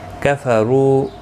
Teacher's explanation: رو واو مدہ ہے، 1 الف کی مقدار کے برابر کھینچ کر پڑھیں گے. را پور پڑھا جائے گا پیش کی وجہ سے.